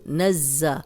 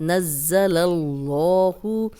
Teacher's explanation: اب زا سیٹی والا ہے، 2 بار ادا ہوگا، کیوں ایک دفعہ پچھلی نون کی زبر کے ساتھ اور ایک دفعہ اپنی حرکت کے ساتھ. نزل اللہ، اللہ کا لام پیچھے لام پہ زبر تو اس لیے یہ لام موٹا پڑھیں گے.